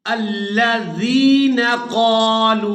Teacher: लाम को वाव मद्दा की वजह से खींचकर अदा करेंगे और यहाँ पर मद्दे लाजिम हो रही है।